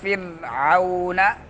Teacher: فرعون میں را کو کیا کرنا ہے؟ باریک پڑھنا ہے